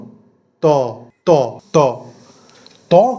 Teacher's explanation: কম্পন কিন্তু সেই তুলনায় হচ্ছে না তাহলে ত অঘোষ বর্ণ